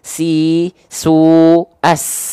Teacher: Si kan ngalir deras ya nafasnya ya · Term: mengalir nafas